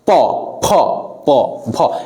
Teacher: আমরা এগুলো উচ্চারণ করতে গেলে আমাদের ঠোঁটের স্পর্শ লাগছে। প, ফ প ভ, ফলে এইগুলোকে বলা হয় ওষ্ঠ।